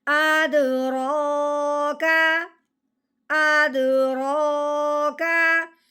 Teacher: کھڑی زبر آنے کی وجہ سے رو کو ہم نے 1 الف کے برابر لمبا کرنا ہے